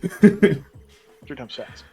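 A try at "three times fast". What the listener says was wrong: Because people always say it like that too. 3 times fast, not like 3 times fast. There's no pause. That fucking comma is important.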